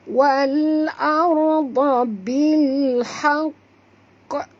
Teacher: Di sini cara bacanya kena berhenti dulu 2 saat baru bunyikan qa di ujung kerana ini adalah qalqalah akbar.